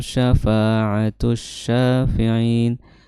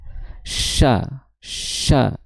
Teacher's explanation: Huruf sya itu makhrajnya adalah di tengah lidah.